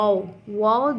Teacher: दोनों होठों को गोल करने से अदा होता है